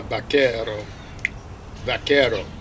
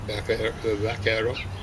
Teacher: it's not quite exactly like a B. I guess you call it a fricative or something like that.